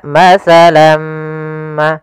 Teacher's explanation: tanwinnya masuk kepada huruf mim tinggallah bunyi suara huruf mim